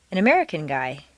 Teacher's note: an American guy the operative word is American guy could even be left out